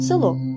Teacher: наприклад слово село це слово ми пишемо з літерою е а вимовляємо і чуємо ненаголошений звук е з наближенням до и